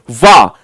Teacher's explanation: अब आ वा वट, देखो अगर आप बा बकरी वाला बोलते हो तो ये तो केवल ओष्ठ के साथ हो जाएगा, है ना, ओष्ठ। लेकिन आप वा बोलते हो तो इसमें आप देखिएगा ओठ आपका एक दंत में लग जाता है, और चूंकि आप ओठ से बोलते हो तो यहां पर देखिएगा ये ओष्ठ दंत, ओष्ठ बराबर दंत्योष्ठ, और इसलिए ये वाली चीज सेटिस्फाई हो जाती है। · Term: दंत्योष्ट